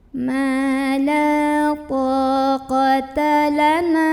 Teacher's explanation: Mad tabi'i karena ada alif sebelumnya fathah, maka bacanya panjang, nunnya 2 harokat